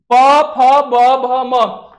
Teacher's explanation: प फ ब भ पढ़ते समय हम लोगों का जो ओट है केवल काम करता है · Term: ओस्ट